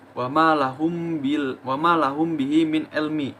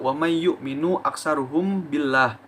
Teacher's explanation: Maka apabila ada huruf mim mati atau mim sukun yang bertemu dengan ba, maka mim mati tersebut dibaca dengan samar dan dengung sepanjang 2 harokat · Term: ikhfa syafawi